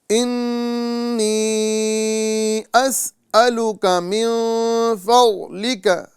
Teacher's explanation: جب بھی نون مشدد ہو یا میم مشدد ہو وہاں پر ایک الف کے مقدار ہم گنہ کریں گے، یعنی ناک میں آواز لے کر جائیں گے